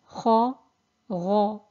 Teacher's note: there's a concaving in the tongue, which results in a strong echo sound in the mouth · So they both share an articulation point, and they are articulated from the top part of the throat, where the soft palate meets the top of the throat. And you can see in the pictures, in the diagrams, that they're both elevated letters.